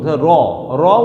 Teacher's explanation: জিহ্বা অগ্র বারবার কম্পিত হয়, এ কারণে তাকে বলা হয় কম্পনজাত ধ্বনি